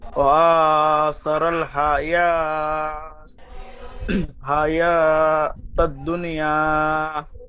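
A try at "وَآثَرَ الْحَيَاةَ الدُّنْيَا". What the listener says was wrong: হায়াতা দুনিয়া বলছেন, দুন দাল নুন পেশ, দুন নুন সাকিন একালি গুণা করে পড়তে হবে। ওয়াসারাল হায়াতাদ দুনিয়া, দুন ইদগামে নাকিস গুণা হবে। ওয়াসারাল হায়াতাদ দুনিয়া। দুন্নি বলছেন, দুন দাল নুন পেশ, দুন।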